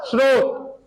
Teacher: और जहां पर स आधे के बाद में स्पर्श वर्ण न आए, अंतस्थ और ऊष्म वर्ण आए, वहां पर सीधे ही अपने को स ही बोलना है, कोई ई या अ का वाचन नहीं करना है